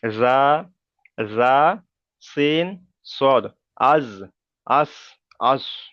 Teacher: উচ্চারিত হয় জিভের আগা এবং সামনের উপরের এবং নিচের দুই দাঁতের আগার সাথে লাগিয়ে উচ্চারিত হয়। জিভের আগাটা সামনে দুটো দাঁত এবং নিচের যে দুটো দাঁত আছে ওই দাঁতের মাঝখানে জিভটা রাখতে হবে এখানে, উপরে সামনে দুটো দাঁতের মাঝখানে আর নিচে দুটো দাঁতের মাঝখানে।